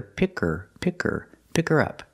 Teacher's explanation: You don't hear the H because the word her is not stressed.